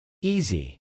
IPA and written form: ˈizi (easy)